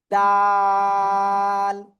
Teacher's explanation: জিহ্বার আগা সামনের উপরে দুই দাঁতের গোড়ায় লাগিয়া। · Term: দাল অক্ষরটা